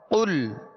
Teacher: قاف پر پڑھیں گے اس لیے کہ یہ حروف مستعلیہ میں سے ہے، اور لام کا جو سکون ہے، جزم ہے، اس میں جنبش پیدا نہ ہو۔ قل، حرف با حرف کلک کی سہولت، با الف زبر با، تا واو پیش تو۔